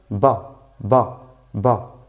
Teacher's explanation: Con fatha, y esta fatha es esta rayita que va encima de la letra, representa la vocal A española, pero corta también